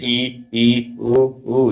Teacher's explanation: और संवृत में क्या होता है, वो मुंह जो है लगभग लगभग बंद होता है। तो ये जैसे ई ऊ जब बोलते हैं हमारा मुंह लगभग बंद रहता है। तो ये है मुंह के खुलने के आधार पे वर्गीकरण, बहुत ही इंपॉर्टेंट है, एग्जाम में पूछता है।